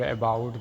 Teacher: we encounter a central mid lax unrounded vowel represented by the symbol called Ashwa.